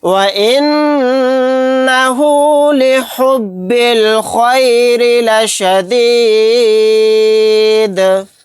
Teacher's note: با کو لام ساکن کے ساتھ ملا دیں گے، الف نہیں پڑھا جائے گا۔ خوا کو یہاں پر موٹا یعنی پر پڑھیں گے، را کو باریک پڑھیں گے کیونکہ را کے نیچے زیر ہے۔